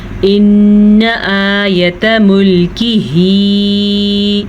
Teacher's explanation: نون کے اوپر شد ہے تو نون پہ غنہ ضروری ہو جائے گا